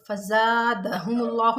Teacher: फ़ज़ादहुमुल्लाहु में लफ्ज़ अल्लाह से पहले पेश आ रहा है, लफ्ज़ अल्लाह को मोटा पढ़ेंगे